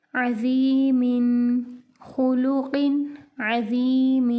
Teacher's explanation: تنوین کے بعد عین حروف حلقی میں سے آگے، یہاں پر غنہ نہیں ہوگا